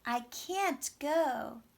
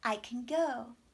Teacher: you should hear a clear vowel on the stressed negative. And you should hear an unclear vowel, a schwa, here on the unstressed can.